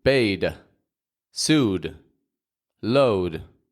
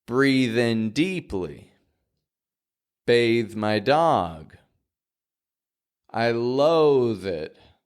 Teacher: make sure that there are no extra sounds it's just a fading and light th